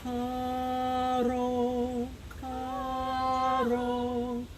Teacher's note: instead of pronouncing the R, almost pretend you're going to start to pronounce a letter D. It's like your tongue goes up to pronounce a letter D, but it really doesn't.